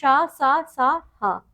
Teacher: इनका उच्चारण रगड़ के साथ निकलने वाली वायु से होता है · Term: उष्म व्यंजन